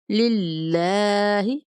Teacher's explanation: ایجاک، للہ، یہاں پہ باریک پڑھیں گے، للہ نہیں پڑھنا، موٹا نہیں کرنا، للہ باریک پڑھیں گے